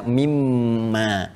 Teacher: Kalau kita sambungkan min dengan ma, karena ada hukum idgham di sini, ya idgham bi gunnah, maka kita baca mimma. Asalnya min dengan ma.